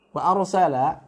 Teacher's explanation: La-nya hanya dibaca dengan satu harokat, ya, pendek.